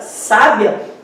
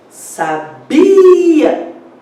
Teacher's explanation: Só que em sábia é o sa, a segunda de trás para frente. E em sabia é o bi, a segunda sílaba tônica, né?